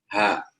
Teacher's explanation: Pada saat kita mengucapkan huruf ha, maka udara keluar. Tidak tertutup, tidak tertahan. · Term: al-hamas